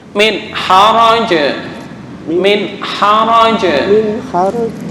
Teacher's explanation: Ya, nggak boleh dengung. Ini disebut dengan bacaan idhar halqi.